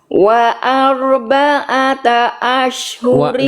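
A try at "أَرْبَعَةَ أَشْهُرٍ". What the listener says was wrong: Gak ada wawunya Bunda. Wa arba'ata, gak ada wawu. Langsung arba'ata saja.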